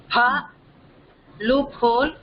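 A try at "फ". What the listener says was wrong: பால loophole ங்கிற சமயத்துல பா இருக்கக்கூடாது. பா தான். அந்த ஃபர்ஸ்ட் பாவே கொஞ்சம் அழுத்தி சொல்லணும், அவ்வளவுதான்.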